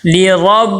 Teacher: آگے را کو با کے ساتھ ملائیں گے، با کے اوپر تشدید ہے، تشدید والے حرف کو مشدد کہتے ہیں، مشدد حرف کو سختی کے ساتھ ذرا ٹھہر کے پڑھتے ہیں، لربہ، با کے نیچے زیر ہے، زیر کو معروف ادا کرنا ہے، مجہول نہ ہو، اور با کو لمبا بھی نہیں کرنا